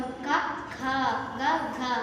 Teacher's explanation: క వర్గం క, ఖ, గ, ఘ, ఇన్య. ఇవి కంఠం నుండి పుడుతున్నాయి. కంఠం అంటే గొంతు, అందుకే వీటిని కంఠ్యాలు అంటారు.